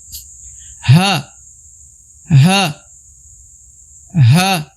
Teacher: Huruf H berasal dari pangkal tenggorokan atau tenggorokan bagian dasar ya, bagian bawah.